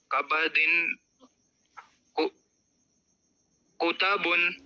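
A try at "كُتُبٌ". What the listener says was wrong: تا پہ پیش ہے، ہجے کر لو.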